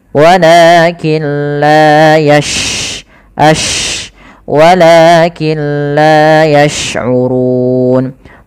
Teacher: dia ada sifat namanya sifat tafasyi, yaitu intisarus saut fil fam, menyebarnya suara kita di dalam mulut